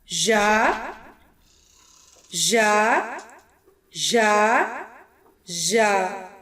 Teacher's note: زبان کا درمیانی حصہ اوپر تالو سے لگنے سے ادا ہوگا۔